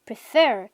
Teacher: tiene 2 sílabas y se acentúa en la segunda